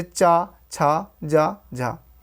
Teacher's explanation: जिन व्यंजनों के उच्चारण में स्पर्श का समय अपेक्षाकृत अधिक होता है और उच्चारण के बाद वाला भाग संघर्षी हो जाता है, और उच्चारण के बाद वाला भाग संघर्षी हो जाता है, वह स्पर्श संघर्षी कहलाते हैं।